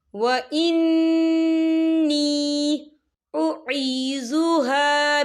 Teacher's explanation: یا ساکن سے پہلے زیر ہے اور اس پہ چھوٹی سی مد بھی ہے تو ہم اسے 4 حرکت کے برابر کھینچ کے پڑھیں گے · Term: مدہ